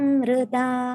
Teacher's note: Bravimi sanskritam vacha ब्रवीमि संस्कृतं वाचा ब्रवीमि संस्कृतं वाचा ध्यायामि संस्कृतं हृदा ध्यायामि संस्कृतं हृदा ध्यायामि संस्कृतं हृदा. So hृदा, the h has to be audible because otherwise it will sound like rida. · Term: hr